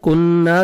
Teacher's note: کننا, کاف کو باریک پڑھیں گے. نون مشدد آپ نے غنہ کرنا ہے, اور الف مدہ 1 سیکنڈ نون کو کھینچنا بھی ہے